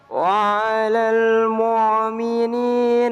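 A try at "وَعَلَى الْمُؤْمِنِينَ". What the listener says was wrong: Wa'alal mu'min. Jangan mu' ya. Itu kayak ngain ya kan. Jangan wa'alal mu'. Jangan apa begitu. Tapi jangan wa'alal mu'. Ya begitu jangan. Kelihatan fasih tapi salah.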